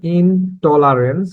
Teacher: এই উদাহরণটিতে দ্য আলভিওলার sound ট influences the pronunciation of the final segment of ইন টু be an আলভিওলার sound. অর্থাৎ এই উদাহরণটিতে টলারেন্স শব্দটির শুরুর অংশটি ট, এই সাউন্ডটি এর পূর্বের প্রিফিক্স ইন এর মধ্যে থেকে ন কে উচ্চারণ হতে প্রভাবিত করেছে। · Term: রেগ্রেসিভ অ্যাসিমিলেশন